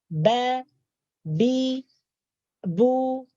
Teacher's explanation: Huruf ba juga keluar daripada 2 bibir.